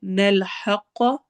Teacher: نلحق ح حروف حلقی میں سے ہے، قاف کو بھی ہم نے ہیوی پڑھنا ہے، موٹے حروف میں سے ہے